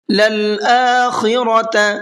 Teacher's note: خا کو پر کر کے پڑھیں گے